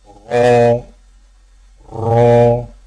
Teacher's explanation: را کی ادائیگی میں زبان کی نوک کی پشت کو اوپر والے دانتوں کے مسوڑوں سے لگا کر موٹی آواز میں پڑھیں